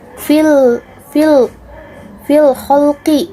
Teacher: Fil khalqi itu disebut juga alif lam qamariyah karena lamnya kebaca